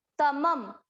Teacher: क्योंकि ये शब्द के अंत में है तो इसको हम पढ़ेंगे आधा म। तमम। शा, शा के बाद आधा स।